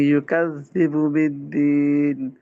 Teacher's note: کاف کو بھی نا باریک پڑھیں گے.